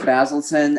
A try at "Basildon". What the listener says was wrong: Well, it hasn't got a T in it, mate. It's Basildun, not Basilton. It's Basildun, yeah? So you pretty much mispronounced it, to be fair.